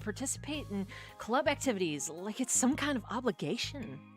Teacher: Like towards towards the point in the sentence where she says the word like, I'm going to like lean a bit more into the vocal fry and then just like, you know, carefully weave it in there.